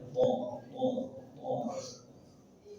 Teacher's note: ujung lidah ke pangkal gigi atas